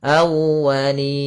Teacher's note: tekan di wawnya awwa untuk menyempurnakan daripada makhraj wawnya, monyongkan sedikit.